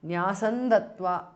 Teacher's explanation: న్యాసం ends in అనుస్వార followed by ద సో ది అనుస్వార changes to న్ which is ద nasal of ద త వర్గ · Nyasam ends in Anuswara followed by Da. So, the Anuswara changes to N, which is the nasal of the Ta varga. Nyasandatva because of sandhi.